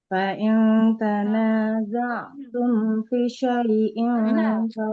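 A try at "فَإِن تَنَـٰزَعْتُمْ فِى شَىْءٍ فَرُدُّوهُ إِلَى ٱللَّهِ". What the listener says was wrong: Fi fa-nya panjang. fi syai'in farudduhu ilallah. Fi-nya panjang. Dia kan harokatnya kasro. Di depannya ada huruf ya-nya, maka panjang. Tadi koreksiannya di hamzahnya jangan kayak ain Ibu ya.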